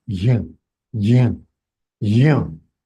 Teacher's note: ग सुनाई देगा, लेकिन ग नहीं है, ज है. लेकिन because of j attached with अनुनासिका, the sound emitted from the mouth is slightly g.